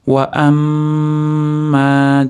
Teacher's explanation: Mim mana tashtidli kelganligi uchun komil g'unna, ya'ni to'rt, besh deguncha ushlab turiladigan to'liq g'unna beriladi.